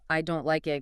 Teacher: collapsing the grammar glue into I don't like it allows the flow to remain perfectly intact, letting the verb like be the star of the sentence